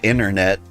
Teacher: I said internet, but like I didn't pronounce the T in inter